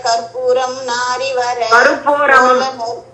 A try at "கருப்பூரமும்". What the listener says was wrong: கற்பூரம் அல்லமா அதுல பாரு ரூதான் இருக்கு. கருப்பூரமும் நாரி.